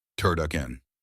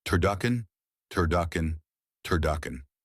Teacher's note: Avoid saying turdukin. Remember the uh vowel, not ooh.